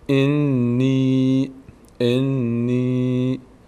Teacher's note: صدای ای می‌گیره به خاطر یایی که بعدش اومده اینجا میشه چی میشه انی انی انی انی زیاد نمی‌کشیم انی